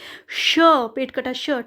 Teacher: पेट कटा श, ठीक है, इसका होता है आपका मूर्धा से।